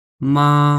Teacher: আপনার ভোকাল কোডের কোন পরিবর্তন হবে না একই লেভেলে সেটা শেষ হয়ে যায় যেমন মা কিভাবে উচ্চারণ হবে মা একদম ফাস্ট লাস্ট আমি একই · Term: ফারস্ট টোন, ফার্স্ট টোন